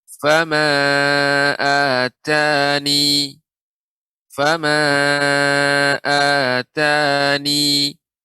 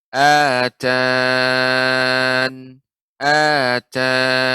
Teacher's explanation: Yang pertama menetapkan ya, artinya kita baca ya-nya sehingga menjadi panjang.